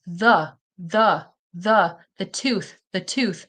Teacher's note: making sure that you are, you know, putting your tongue between your teeth. if it's the th sound